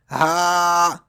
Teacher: It is pronounced from the bottom part of the throat.